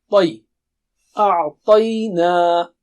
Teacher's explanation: Ta is very thick and high.